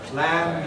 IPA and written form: plæn (plan)